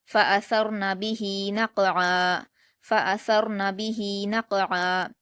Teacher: بِهِ، نون پر حرکت جلد پڑھیں گے، قاف پر جزم ہے، نون کو قاف سے ملا کر قلقلہ کے ساتھ پڑھیں گے